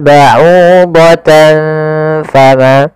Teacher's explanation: Cara membacanya adalah menyamarkan suara tanwinnya kepada huruf fa. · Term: ikhfa